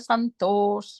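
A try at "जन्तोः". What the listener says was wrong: Yeah, jantos. Okay, the ja. And the ja, you were saying cha.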